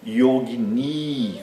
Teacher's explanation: Existe também o feminino dessa palavra que é yogni com i longo no fim, que como eu já disse em geral as palavras com a longo e i longo no fim são femininas, né? Yogini tem duas sílabas longas, a primeira e a última